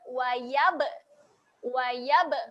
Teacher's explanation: Okay, pada huruf ba ni kita tengok makhraj bibir, rapatkan bibir. Okay, jadi apabila berlakunya lantunan, kita rapat bibir kemudian kita buka balik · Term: qalqalah